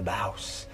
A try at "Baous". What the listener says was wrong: Yeah, I think we're pronouncing the S, Baous.